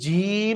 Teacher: শক্ত করে উচ্চারণ করতে হবে তার জিহ্বার মধ্যখান তার বরাবর উপরে তালুর সাথে লেগে